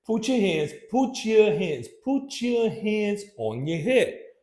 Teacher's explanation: if the T goes right in front of the Y sound, gives us the ch sound